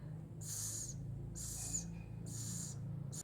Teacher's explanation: Su articulación es alveolar. Se coloca la lengua sobre la raíz de los dientes superiores. Fricativo. Se hace un estrechamiento por donde pasa el aire rozando. Es sordo, no vibran las cuerdas vocales. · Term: fonema S